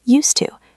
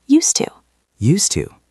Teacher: We don't say use like use a pen with a buzzing Z sound. When we speak fast in this structure, the S becomes soft.